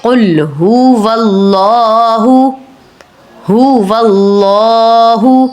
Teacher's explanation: قل هو اللہ، اب یہاں پر اللہ کے نام سے پہلے واؤ کے اوپر زبر ہے، تو آپ نے اللہ کے نام کو پر کرنا ہے، یعنی کہ موٹا کر کے ادا کرنا ہے